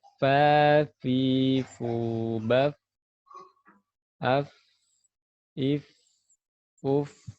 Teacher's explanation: Perut bibir bagian bawah dan ujung gigi seri atas. Keluarlah huruf fa.